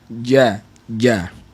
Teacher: hujung lidah kita nak sebut huruf Jim daripada Tengah lidah kerana makhraj huruf Jim adalah tengah lidah dengan langit yang bersententang dengan dia